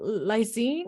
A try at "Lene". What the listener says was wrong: It's Lene. The S is silent.